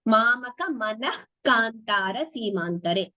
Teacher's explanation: So manaha here visarga followed by ka becomes jihva muliya.